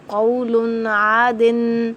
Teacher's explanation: میں غنہ نہیں کروں گی، میں اسے پڑھوں گی قولن عادن، عین کو تو میں ادا کروں گی لیکن قولن کا غنہ میں نہیں کروں گی